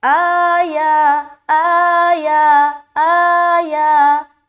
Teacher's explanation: حمزہ کے اوپر بھی کھڑا زبر اور یا کے اوپر بھی کھڑا زبر ہے، تو دونوں کو برابر کھینچنا ہے